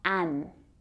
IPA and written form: æn (an)